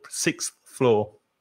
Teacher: because you have to change your mouth position six and then the tongue comes out to make the th sound